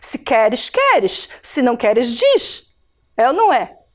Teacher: o som do S marcado também é um chiado